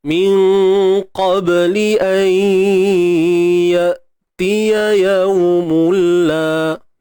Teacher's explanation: Kemudian matikan hamzah ni. Pastikan sifat syiddahnya terjaga dengan baik. Ya. Matikan betul-betul.